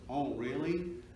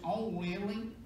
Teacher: an American who says, oh really, with a generally sort of back nasalization